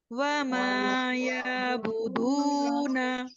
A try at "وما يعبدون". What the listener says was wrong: ये आपको आप स्ट्रेच नहीं करेंगी यहाँ पर। यहाँ जैसे आप अलिफ मद्दा करती हैं या फिर आप इसको खड़ी जबर के साथ करेंगे। आइन के अपनी एक साउंड है, तो कोशिश कीजिए कि आइन की अदायगी को दुरुस्त कीजिए। वमा यअबुदून